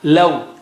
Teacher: It is not love of English, okay? Law. You got to make your lips round. Law, not love. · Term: soft waw